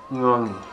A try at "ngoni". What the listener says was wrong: That was good.